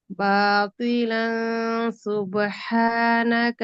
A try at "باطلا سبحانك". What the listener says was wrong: শুনেন, এনে গুণাটা অনুস্বর গণ্য হয়েছে, এটা তো অনুস্বর গণ্য না, এটা ইকফা। ইকফা সিন বা লাংস লাংস এরকম হবে। আপনার লাংসু হচ্ছে, লাংসু লাংসু না, লাংস। মুখের মধ্যে জিহ্বাটা নড়ে, বোঝা যায়, শব্দটা শোনা যায়। লাস। লাসু লাসু লানসু লাসু লানসু লান্স লান্স।